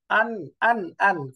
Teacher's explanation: নুনের মাখরাজ জিহ্বার আগা উপরের তালুর সাথে লেগে উচ্চারণ হওয়ার কথা